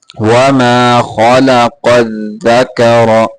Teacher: خا لام دونوں کو موٹا کرنا ہے ، خا اور قاف کو، اور دال کو صحیح طریقے سے